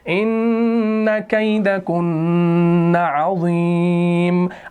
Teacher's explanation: اس کے اوپر دو پیش تھا تو وقف کی صورت میں اس کو ہم نے ساکن بنایا، عارضی سکون دے دی